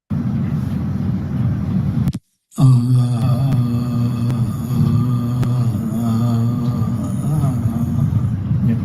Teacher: This is spasmodic dysphonia, where you put a strained quality in the speech, and there is no rhythmicity.